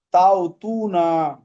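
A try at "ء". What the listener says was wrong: তাও পড়ছো কেন? হামজাটা, হামজা উচ্চারণ করো। হামজা, হামজা বলো। আলিফের উপর জবর থাকলে হামজা।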